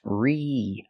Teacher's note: We have to use a long E sound like green beans. Recently. Not recently, not the short I like this is.